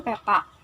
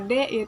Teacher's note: bunyi yang diucapkan dari ujung lidah dan Gigi atas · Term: apikodental